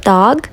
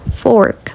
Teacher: um O mais aberto na vogal curta, dog, e um O mais fechado na vogal longa, fork